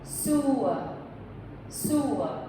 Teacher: it ends with just a short vowel su, and once again, the first part of that is accented.